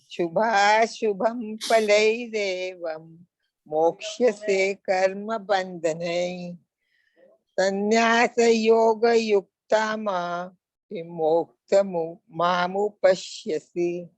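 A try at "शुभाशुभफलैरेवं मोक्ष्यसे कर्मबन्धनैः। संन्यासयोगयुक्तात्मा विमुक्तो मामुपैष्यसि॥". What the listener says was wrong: Amma, in 2-3 place it was just problem that विसर्ग का उच्चारण ना ह जैसे होता है अगर ये अंत में रहेगा, ठीक है?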